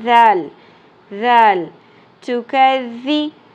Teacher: ذال کو نرمی سے پڑھنا ہے. شدت والی آواز اور سیٹی والی آواز نہیں آنی چاہیے.